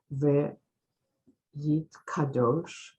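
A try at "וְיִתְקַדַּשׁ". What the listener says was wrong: That's again under the dalid. Dash, v'yit kadash. So now there are those who used to pronounce this with more of a O than a, but that's not how we're going to pronounce it. So we're going to do it Yit Gadal, V'yit Kadash, Shemay Rabbah.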